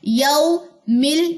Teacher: मीम की जेर को लाम की जज़म से मिलाइए, हमजा वसली दरमियान में पढ़ा नहीं जाएगा।